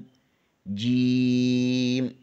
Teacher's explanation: وسط زبان بالمقابل اوپر کے تالو سے لگے تو جیم ادا ہوتا ہے